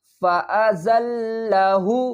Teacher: زا کو لام سے ملائیں گے، زا کو سختی کے ساتھ پڑھیں گے